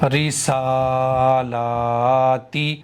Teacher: سین کو بھی کھینچا ایک الف میں نے، لام کو بھی کھینچا کیونکہ دونوں پر کھڑا زبر ہے